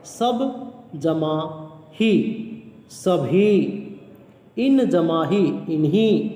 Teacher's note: अल्प प्राण ध्वनि महाप्राण हो जाएगी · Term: महाप्राणीकरण